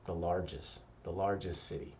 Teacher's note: When we say largest, commonly we don't emphasize the T, just the largest city.